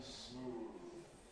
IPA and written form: smuːð (smooth)